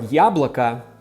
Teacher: in the word яблоко, the last letter sounds like an a because it's unstressed. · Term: unstressed O's